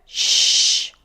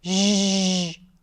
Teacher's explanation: post-alveolar, fricative, sh, voiceless versus zh, voiced